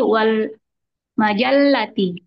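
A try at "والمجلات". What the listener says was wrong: wal majallah lah panjang.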